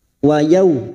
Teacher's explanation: fathah bertemu sukun, kita lunakkan seperti bertemu dengan huruf abjad u. Wa yaw, jangan wa yaw.